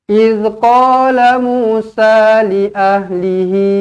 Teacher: Panjang di sini ada ombak rindu 4 ataupun 5 harakat.